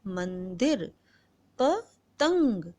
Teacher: जैसे मंदिर, पतंग, तो मन अंग की आवाज, तंग अंग की आवाज, तो ये हमारी नाक से आवाज निकलती है इसलिए हम इसे कहते हैं अनुस्वार